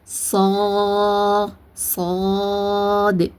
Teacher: நம்மளுடைய நாக்கு நடுவுல அப்படியே ஸ்பூன் மாதிரி ஸ்பூன் ஷேப்ல வளைஞ்சிருக்கும். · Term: வல்லினமா